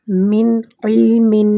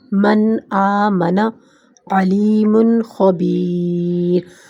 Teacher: نون پوری طرح ادا ہوگا، ناک کی آواز گنہ نہیں ہوگی، آواز صاف اور الگ ہوگی، ٹھیک ہے، یعنی جو لفظ ہے اس کو ویسا ہی پڑھا جائے گا، میں آپ کو تھوڑی مثالیں بھی دکھا دیتی ہوں اس کی آگے جا کر۔ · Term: اظہار